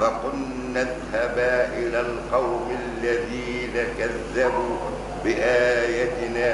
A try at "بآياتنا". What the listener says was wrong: بآياتنا مد يا شيخ